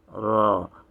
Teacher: raw you flatten it and a little you bring it raw you bring it under the front of the upper teeth a little bit and you trill it just a little